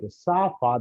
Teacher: the vocal folds are held apart to let air pass through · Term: voiceless sounds